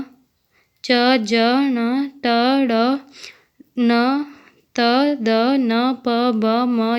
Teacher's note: इनके उच्चारण में हवा की कम मात्रा तथा हवा कम शक्ति के साथ बाहर आती है। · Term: अल्प प्राण व्यंजन